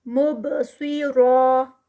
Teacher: जब इसको रोकेंगे तो 2 काउंट्स पे और रॉ हैवी ही रुकेगा